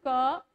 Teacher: तो का किससे बोला जा रहा है? कंठ से।